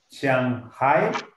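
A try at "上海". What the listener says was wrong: A ver, ahí la pronunciación hay que quitarle la I. Y debe ser con acento cuarto. Shang, no con Shang, tercero. Cuarto, Shang. El segundo carácter debe hacer acento tercero. Shanghai. No sea Hai, es acento dos, no. Acento tercero. Shanghai.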